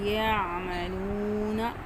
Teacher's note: عین گلے کے درمیان سے ادا کرنا ہے، عین حروف حلقی میں سے ہے، واو مدہ کھینچ کر پڑھیں گے، زبر زیر پیش کو جلدی سے پڑھیں گے، ٹھیک ہے۔